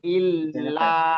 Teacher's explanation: di lam yang bertasdid jangan sampai ditahan gitu ya.